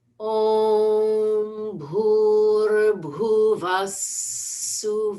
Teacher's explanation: So the visarga, aha, changes to a sa. So we're adding a second S sound.